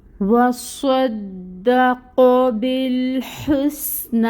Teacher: نون کے اوپر کھڑی مد ہے، نون کو 2 حرکت لمبا کھینچیں گے